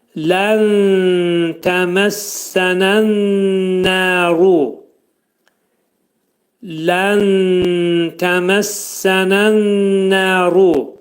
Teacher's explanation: nun hərfi tə hərfinə yetişir, ixva olacaq. Nunun 1/3 tənin məxrəcində gizlədiləcək.